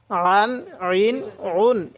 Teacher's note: আইনটা উচ্চারণের সময় গলার মধ্যে একটু চাপ দিয়ে পড়লে আইনটা সহি উচ্চারণ হবে